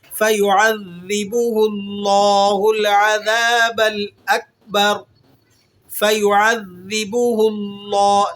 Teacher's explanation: لفظ اللہ کو آپ نے یہاں پر موٹا ادا کرنا ہے. لفظ اللہ سے پہلے والے حرف پر زبر یا پیش ہو تو اسے موٹا پڑھا جاتا ہے، اور اگر اس سے پہلے والے حرف پر زیر ہو تو ہم نے اس کے باریک پڑھنا ہوتا ہے.